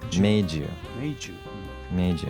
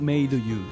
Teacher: D and Y from made and you, when they're next to each other, they combine together to make a J sound, like Jew, made you.